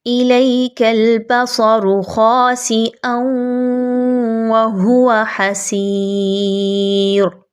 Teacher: اب یہاں پہ واو کے اوپر تشدید ہے، واو یہاں پر ایک بار نہیں دو بار آ رہی ہے۔ ہجے کرنے کی صورت میں بھی اس کو دو بار پڑھا جائے گا۔